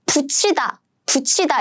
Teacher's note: if this 티읕 meets 이, then it becomes 치